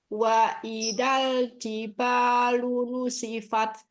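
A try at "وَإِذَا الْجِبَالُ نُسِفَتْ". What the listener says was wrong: Zalnya gesekkan sedikit biar nggak kayak wa idal.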